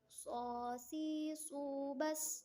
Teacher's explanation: Tempat keluarnya sama seperti melafalkan huruf sin, tidak jauh dengan huruf sin. Lidah kita itu terangkat sehingga suara itu menebal gitu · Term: Huruf shot